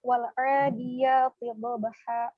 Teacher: catatannya di yang pertama wal adiyati dhabha, huruf do itu posisi makhrajnya tepi lidah menempel ke gigi geraham. Do dan memiliki sifat tebal juga.